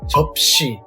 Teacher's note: Cut short the P sound and close your mouth at the end.